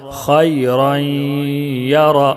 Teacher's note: फमन यअमल मिस्क़ाल दर्रतिन खैरन यरह, खा या ज़बर खै, रा या दो ज़बर रई, इदगाम नाक़िस गुन्ना के साथ मिलाकर पढ़ेंगे